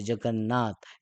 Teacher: अनुनासिक संधीतील जोड शब्द उच्चारताना नाकातून आवाज येतो